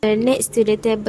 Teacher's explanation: So sounds like s and k become more aspirated and shortened, and the final t is not as released as in native English